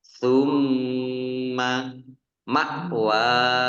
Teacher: mim tasdid dibaca Gun atau mendengung ditahan dua harakat kalau tidak ditahan berarti tidak mendengung tumma mawahumah ya Ma ringan